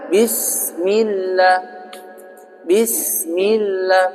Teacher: bis enggak boleh jadi tekan gitu harus dialirkan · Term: hames